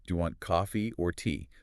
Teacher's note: The first option goes up, the final one goes down. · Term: rise, fall, rise-fall